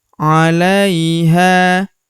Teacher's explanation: Huruf ha kita panjangkan dua harakat karena terdapat alif di depannya